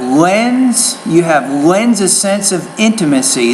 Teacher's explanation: the word lens and then a you want to blend and connect those sounds together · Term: blending